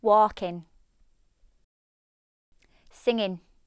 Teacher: In the Yorkshire accent, however, this is treated like an N with the front of the tongue on the roof of the mouth.